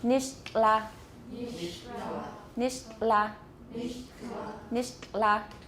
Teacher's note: Keep your tongue tip on your alveolar ridge, making the T, and then the air is going to come out the sides of your tongue.